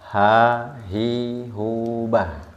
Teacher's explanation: makhrajnya huruf H sama dengan Hamzah yaitu dipita suara dan dia pita suaranya terbuka ha hi hu Bah dan membuka pita suaranya Jangan terlalu lebar